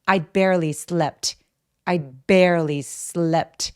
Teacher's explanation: bear 그리고 slept 이 부분만 잘 들리게 해주시면 돼요.